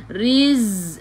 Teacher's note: Zai sifat hurufnya safir kena bunyikan z, macam bunyi lebah.